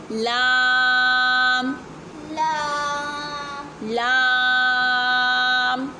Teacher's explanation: ज़बान की जड़ जब सामने वाले 4 दांतों की जड़ से लगती है तो अदा होता है लाम